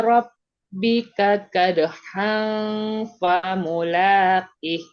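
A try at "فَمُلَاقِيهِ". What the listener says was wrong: Enggak, famulaqih. Panjang dulu baru ha.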